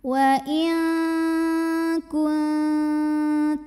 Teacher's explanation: Di sini ada hukum ikhfa ab'ad karena ada nun sukun yang menghadapi huruf kaf. Cara baca nun sukunnya adalah dibunyikan samar-samar, siap-siap menuju kaf disertai bunyi dengungan.